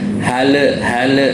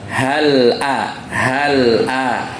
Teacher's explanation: diqalqolahkan itu kurang tepat jadi yang benar hal a hal A jadi lam itu tidak mantul mantul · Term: lam sukun